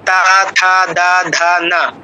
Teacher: জিহ্বার অগ্রভাগটা একটু করে দাঁতে লাগছে, উপরে পাটির দাঁতে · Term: দন্ত বর্ণ